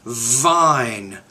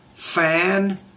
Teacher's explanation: you need to pronounce the V with more vibration